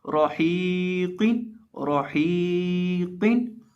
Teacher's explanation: कौफ जो है इसको भी मोटा करेंगे क्योंकि कौफ हरूफ़े मुस्तालिया में से है